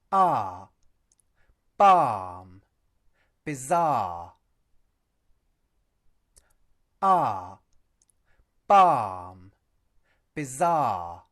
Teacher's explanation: Notice that the word 'are' does not contain an /r/ sound; nor does the second syllable of the word 'bizarre'.